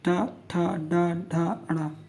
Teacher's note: ठीक, मूर्धा से बोला जा रहा है।